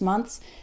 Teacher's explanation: the th is still there it's just very very small